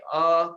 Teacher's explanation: आप देखेंगे अ कंठ से निकला, तो स्वर में पहला आया अ